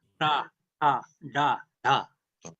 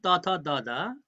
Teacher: in Nepali ta da you put the tip of the tongue in between the teeth